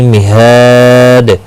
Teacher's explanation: مہاد، ہا الف مدہ ہے اور دال وقف کی صورت میں دال ساکن پڑھا جائے گا، اس پر قلقلہ بھی ہوگا۔ ہا الف مدہ ہے، ایک الف کی مقدار کے برابر کھینچ کر پڑھیں گے، اور وقف کی صورت میں 3 سے 5 الف کے برابر کھینچ کر وقف کریں گے، اور دال پر قلقلہ بھی ہوگا۔